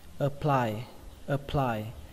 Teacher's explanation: Từ thứ hai các bạn đọc là apply, trọng âm của nó rơi vào âm apply, âm thứ hai đấy